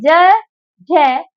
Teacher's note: कंठ से बोला जाएगा जब आप बोलेंगे ज ज तो बेटा हमारी जीव तालू पर जाकर मिल जाएगी